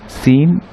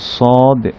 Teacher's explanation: এখন জা এবং সিনের ক্ষেত্রে যেমন সিনটা পাতলা, সদ এটার বাতাসটা একটু ভারী হয়ে আসে, তো এটাকে মোটা করার জন্য পিছনের জিহ্বাটাকে একটু তুলে দিতে হয় পিছনের দিকে। সদ, সিন, সিন একেবারে পাতলা চিকন ধরনের আওয়াজ, আর সদ বাতাসটা একটু মোটা হয়